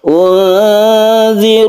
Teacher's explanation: Unzirukum, nun bertemu dengan zal, ini kita sebut dengan ikhfa hakiki. Ikhfa artinya samar, kita baca nun itu menjadi samar.